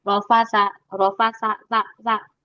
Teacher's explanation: Perhatikan huruf sa, dia punya sifat hames. Jangan sampai hilang hamesnya.